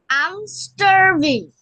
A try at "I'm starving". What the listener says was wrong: Yes, starving. আরটাকে silent করে দাও। I'm starving.